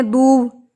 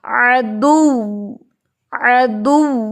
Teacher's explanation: یعنی آپ نے جب یہاں پہ وقف کرنا ہے تو آپ نے یہ سمپل نہیں پڑھنا عدو دو، کچھ اسٹوڈنٹس کرتے ہیں دو، اٹس رانگ، کیونکہ واو کے اوپر شدہ ہے، سختی سے آپ نے اس کے اوپر ملا کے ہونٹ گول کرنے ہیں